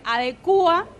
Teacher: ahí marcas un hiato, o sea, rompes el diptongo de la U y la A, y ahí sí va con un acento.